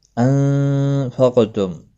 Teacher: انفقتم، نون ساکن کے بعد حروف اکفا کفا آیا ہے، اخفا حقیقی ہوگا، غنہ کے ساتھ پڑھیں گے۔ قاف مستعلیہ ہے، پر بھی پڑھا جائے گا، اور یہ ساکن بھی ہے، حروف قلقلہ میں سے بھی ہے